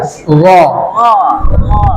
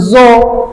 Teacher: Bedanya ro itu dia tebal. Tebalnya kayak O dia. Ro. Jadi bukan zo.